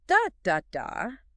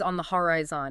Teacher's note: two unstressed syllables followed by a stressed one